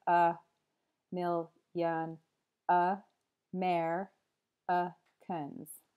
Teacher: in the phrase a million Americans there are seven syllables and the stressed syllables are mill and mer so they have their full vowel sound there but all of the other unstressed syllables just have the schwa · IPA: /ə ˈmɪljən əˈmerəkəns/